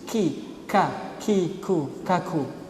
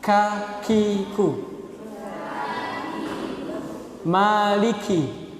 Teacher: kaf ini hamas, sifatnya hamas ya. Berdesis